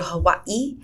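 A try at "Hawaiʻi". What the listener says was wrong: So they actually pronounce it Hawaii. The W is not even pronounced.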